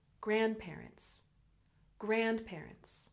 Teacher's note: Grandparents has stress on the first syllable